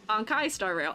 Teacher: When you say Star, you raise your pitch in the A.